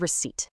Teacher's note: It kept its silent P just to flex its Latin root recepta. Your mouth never actually makes that P sound